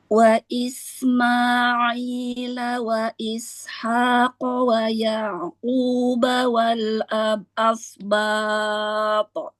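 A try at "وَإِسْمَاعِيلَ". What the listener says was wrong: Wa Isma'i jangan diambil ancang-ancang ya, langsung ke huruf ain. Wa Isma'ila aila.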